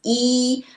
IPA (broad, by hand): iː